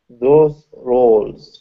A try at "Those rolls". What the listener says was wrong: Yes, good.